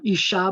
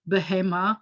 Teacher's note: this word behema accents on the last syllable which is typical